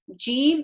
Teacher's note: Jim is from the middle of the tongue, raising up.